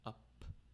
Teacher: we have an unvoiced labial up sound you take both your lips and you puff out